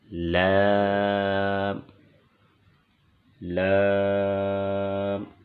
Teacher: لام کی ادائیگی کی جگہ زبان کا کنارہ اوپر والے دانتوں کے مسوڑے۔ لام، لام، زبان کا کنارہ اوپر والے دانتوں کے مسوڑے۔